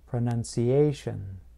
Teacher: I place stress closer to the end of the word, just before the T-I-O-N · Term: word stress